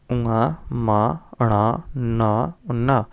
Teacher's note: इसके बाद यमंगण्णानाम नासिकाच्चा, यमंगण्णानाम नासिकाच्चा यानी उंगा मा अणा ना ये अनुनासिक वर्ण है और ये नासिका से बोले जाते हैं